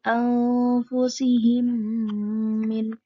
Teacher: jadi membacanya harus dimasukkan. Ada gunnahnya dua harokat juga. Menjadi anfusihim min bisa dipahami? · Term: idgham mimi